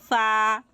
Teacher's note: সামনের উপরের চাদাতের কিনারা নিচের ঠোটের ভিজ অংশের সাথে লাগিয়ে উচ্চারিত হবে ফা